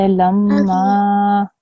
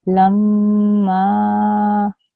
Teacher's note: Can you hear the m sound that I created when I joined the lam and the meme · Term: stressing sound